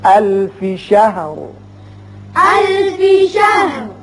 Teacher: وقف کی صورت میں جب را ساکن ہوگا تو اس کو پر پڑھیں گے چونکہ پیچھے زبر ہے. الف شہر.